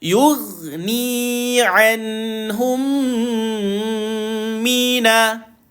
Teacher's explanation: Mim kosong, tengok bawah dia tuan-tuan, jumpa dengan mim, maka berlakulah bacaan idgham mislaini. Maka tuan-puan, rapat bibir dengung dua harakat.